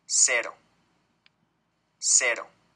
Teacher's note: lo que pasa es que la lengua toca pero muy rápidamente los alveolos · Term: vibrante simple